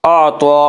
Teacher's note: तो को पुर पढ़ेंगे, तो हरूफ मुस्तालिया में से है।